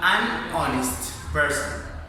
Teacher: although we have the word H, we don't produce the voiceless glottal fricative because the correspondence depends on the sound